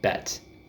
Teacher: So it's the same position as A, as in bait, but this is much more relaxed. This is bet. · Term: eh